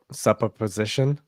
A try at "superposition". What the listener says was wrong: No, it's super. Super as in Superman.